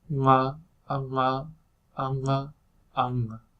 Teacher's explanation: the velar is higher and the uvular is lower and more to the back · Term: uvular nasal